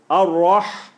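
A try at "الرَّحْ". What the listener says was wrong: That's fine. The ha is actually good. The ra is still not the ripple. Ar-Rah. Ar-Rah.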